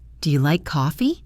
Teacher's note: First, the question. Remember to let your voice rise.